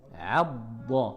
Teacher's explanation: la lettre Dad aussi remplit la bouche et est difficile à prononcer car tout le côté de la langue vient toucher les molaires. Vous sentez que ça, il faut que ça touche les molaires.